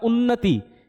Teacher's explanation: यानी न दो बार आ रहा है और तय पे छोटी की मात्रा लग रही है, क्योंकि ती को हम ज्यादा लंबा नहीं खींच रहे